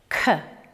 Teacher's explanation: The back of the tongue and the soft palate. K is unvoiced.